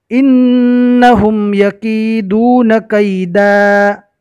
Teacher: دو زبر رکنے کی حالت میں الف مدہ بن جائے گا